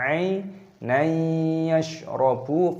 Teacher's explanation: Dibaca sebagai idgham bighunnah, digabungkan dengan bunyi sengau.